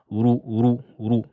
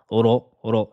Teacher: Attention à ne pas dire ro en avançant les lèvres et en prononçant ru. Mais c'est ro. Les lèvres ne bougent pas. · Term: emphatique